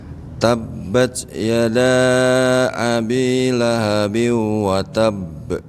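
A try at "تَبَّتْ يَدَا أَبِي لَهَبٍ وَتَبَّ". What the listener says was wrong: Yang biunya Pak agak ditahan. Biu. Ya, agak panjang nahan.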